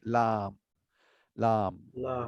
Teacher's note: আচ্ছা, এখন আমরা বলবো 8 নম্বর মাখরাজ, যেটা বলেছিলাম জিহ্বাকে এই একটু ফ্ল্যাট হয়ে থাকবে, তার উপরে তালুতে লাগিয়ে লাম, মানে পাশ দিয়ে হয়, ল যেমন পাশ দিয়ে হয়